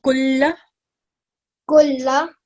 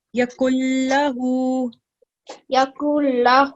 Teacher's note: we're going to join kaf with lam mushaddad. We're going to ignore the noon sakin in between.